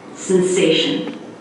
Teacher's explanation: stress on the middle syllable sensation so practice it on just the rhythm a few times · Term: primary stress